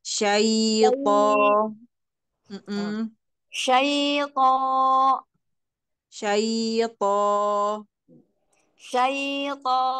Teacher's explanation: Kalau dari coba dari syai dorong-dorong keluar syai sampai terdengar i